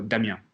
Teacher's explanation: in French, you have the accent, the inflection at the last syllable